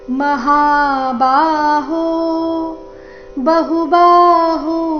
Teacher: ಬಹು ಎರಡು ಅಕ್ಷರ ರಸ್ವ ಬಾಹು ಎರಡು ಅಕ್ಷರ ದೀರ್ಘ